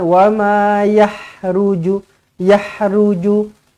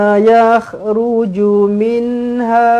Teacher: Ada getaran eh, dekat kerongkong. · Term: huruf kha